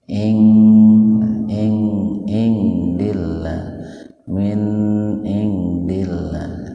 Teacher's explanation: Ihfa akrob, dibaca samar tapi sepintas saja, karena nun mati ketemu dengan dalnya dalam satu kata. Dillah tarkik lafdzul jalalah atau lafaz Allah didahului oleh kasroh, maka dibaca tipis.